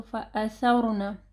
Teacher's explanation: را ساکن ہے، اس سے پہلے سا جو ہے وہ زبر ہے، ٹھیک ہے، تو را ہیوی پڑھی جائے گی